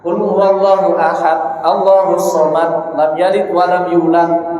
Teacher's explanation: Karena haknya huruf dal itu adalah harus terbaca ketika waqaf, ketika sukun, terbaca qalqalah. Kalau tidak membaca qalqalah, berarti dia sama saja menetapkan huruf di situ yang tadinya dal itu justru ia rubah menjadi ta. · Yang membedakan adalah qalqalah tadi. Kalau dal dia terucap qalqalahnya, kalau ta tidak terucap. Berarti kalau dia qul huwallahu ahad tidak terbaca qalqalahnya dal, berarti sama saja dia merubah huruf yang tadinya dal berubah menjadi huruf ta.